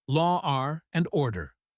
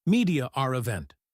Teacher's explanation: The word law ends with a vowel sound and and starts with a vowel. To make it smoother, we add an R, law, R and order. · we add an R sound to connect two vowels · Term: intrusive R